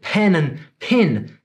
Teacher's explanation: What's up with pen and pin? They both sound like pin to me.